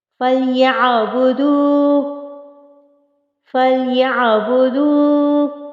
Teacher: یہاں پر عین کو بھی ہم نے وسط حلق سے ادا کرنا ہے، حروف حلقی میں سے ہے یہ اور وسط حلق سے اس کی ادائیگی ہوگی۔